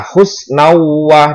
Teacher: ada fathah tain bertemu dengan huruf wawu. Wawu termasuk huruf idgham bi gunnah. Cara membacanya yaitu dimasukkan dengan berdengung.